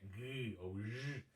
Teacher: Se a gente faz o som do G, que é G ou J, a nossa garganta vibra. Então, quando isso acontece, o ED ele vai ter som de D. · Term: consoante sonora